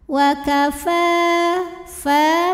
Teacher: ada fathah panjang di atas huruf Fa cara baca nya dibaca panjang fa-nya dua harakat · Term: Mad thobii